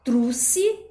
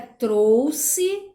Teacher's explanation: pronúncia de ditongo como se fosse uma vogal só